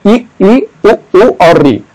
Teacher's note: संवृत्त स्वर जो है जिसमें कि पूरा पूरा बंद रहेगा आपका मुख